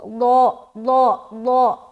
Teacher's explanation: اس میں سیٹی والی آواز نہیں آئے گی، نرمی کے ساتھ اسے ہم ادا کریں گے